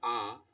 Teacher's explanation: বাগযন্ত্রের একবারে নিচে রয়েছে আ যাকে বলা হচ্ছে নিম্ন ধ্বনি বা কেন্দ্রীয় স্বরধ্বনি